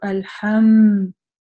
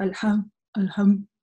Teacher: Уже губы закрыты, но при этом звук еще протекает, то есть потому что он перенаправляется в носовую полость. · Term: назализация